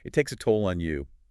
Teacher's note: On often has a slightly different, maybe less rounded vowel and U often gets that more rounded puckered U sound.